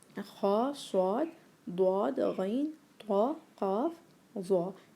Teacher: जब हम इनको बोलते हैं तो क्या होता है, हमारी जो ज़ुबान है वो पीछे से रेस हो जाती है, ऊपर को उठती है, जबकि दरमियान से नीचे को कर्व हो जाती है और हमारी आवाज़ जो है वो मुंह के अंदर ही गूंजती है, जिसकी वजह से वो एकदम हैवी होने का इफ़ेक्ट देती है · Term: हरूफुल इस्तिअला